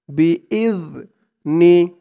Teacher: ইয জালের উচ্চারণটা একদম নরম পাতলা হবে জিহ্বার মাথা উপরের দাঁতের মাথার সাথে লাগবে